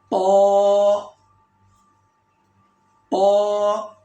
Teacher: زبان کا یہ سینٹر اوپر والے تالو سے لگائیں گے تو، اور نوک زبان کی اوپر والے دانتوں کی جو جڑ ہے وہاں رکھنی چاہیے. یہ تا کی مخرج ہے. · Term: تو کی مخرج